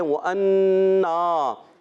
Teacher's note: واو پر زبر، ہونٹوں کی گولائی سے ادا ہوگا، حمزہ کو خوب واضح کریں گے، نون مشدد ایک الف کا غنہ بھی کرنا ہے، الف مدہ بھی ہے، وَأَنَّا غنہ بھی کریں گے ایک الف کا اور ایک الف کھینچیں گے بھی، ٹھیک ہے۔ · اب یہاں سے ہم پڑھتے ہیں تو واو کی تشدید نہیں پڑھیں گے، واو پر زبر، ہونٹوں کی گولائی سے ادا ہوگا، حمزہ کو خوب واضح کریں گے، نون مشدد ایک الف کا غنہ بھی کرنا ہے، الف مدہ بھی ہے